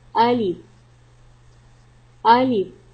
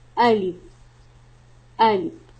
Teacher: Alif pronounced from the bottom part of the throat.